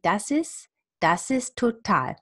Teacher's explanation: I actually think that I usually drop the T.